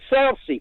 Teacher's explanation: But Southsea, which is to the south of it, you never put a Z in that. That's always Southsea.